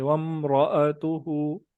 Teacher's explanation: वम्राअतुहु का जो रा है इसको पुर करेंगे, मोटा करेंगे